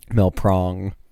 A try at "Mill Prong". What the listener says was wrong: It just sounds like you're saying ma-prong.